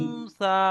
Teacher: নুন সাকিনের আওয়াজকে নাকে তুলে একালিপ পরিমাণ গুণনা করে পড়তে হয়, একে ইকফা বলা হয়।